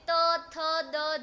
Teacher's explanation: ત થ દ ધ એ બધા દંત્ય છે. કેમ કે એ લોકોના ઉચ્ચાર વખતે જીભ દાંતને અડે છે.